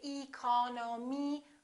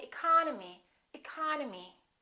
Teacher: the second syllable is stressed therefore this e and this o are reduced we don't say II call no me we say economy economy